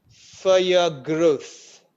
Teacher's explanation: For your, Ra in for disappeared. And your growth, again, Ra in your is also absent. In growth, Ra is there.